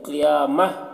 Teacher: جب وقف کریں گے تو یہ گول تا جو ہے یہ ہائے ساکنہ سے بدل جائے گی، تو قیامہ پڑھا جائے گا۔